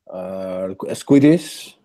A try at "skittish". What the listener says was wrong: Skittish, not not quiddish, not Q, not KW, but just K. No W. So maybe starting with skit and then skittish.